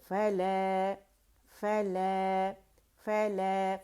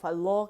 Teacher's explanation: الف ممدودہ جو الف کبیر ہے لام کی آواز کو دو کاؤنٹ کے لیے اوپر کھینچ رہا ہے تو مد طبیعی بن رہا ہے، مد اصلی بن رہا ہے،